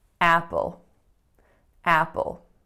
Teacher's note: there's a dark L at the end of this word